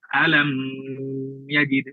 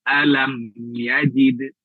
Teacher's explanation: maka dia dibaca izhar tidak boleh didengungkan